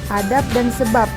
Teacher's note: Tetapi dalam kondisi tertentu, fungsi pembeda antara B dan P bisa batal, setidak-tidaknya bermasalah karena dijumpai bunyi yang sama. Misalnya fonem B pada silaba akhir pada kata adab dan sebab diucapkan P